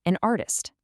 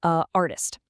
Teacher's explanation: The English language really hates that awkward choppy pause that happens when you try to smash two vowel sounds together